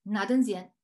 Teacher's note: the initial accent shifts to the second position and we have a trisyllabic sensory form pronounced as nadanzian you